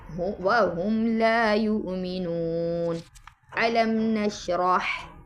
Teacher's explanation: یعنی میم کو اپنے مخرج سے ظاہر کر کے پڑھیں گے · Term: اظہار شفوی